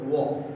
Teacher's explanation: And well, this is called lip rounding. When you use both of your lips, you take both of your lips in a round shape and then produce the sound of wa.